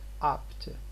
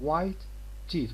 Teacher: We don't release the air for P and then we go on to T, but we say apt. So which means this one is unreleased because it is followed by another voiceless stop in here.